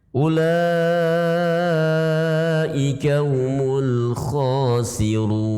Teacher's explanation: Ulaika juga dibaca panjang, itu adalah mad wajib muttasil ya.